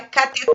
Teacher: O certo é a pronúncia sílaba tônica oxítona, então é cateter. Então a sílaba tônica é a última.